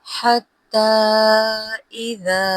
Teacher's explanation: حتی کے ہا کو نرمی سے ادا کیجیے گا